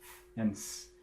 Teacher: F and S are both fricatives and they're both in the front of the mouth